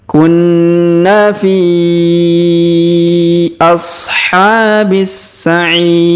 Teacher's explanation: di depan huruf i terdapat Ya Sukun sebelum huruf pemberhentian dan huruf pemberhentian huruf RI kita sukunkan atau kita matikan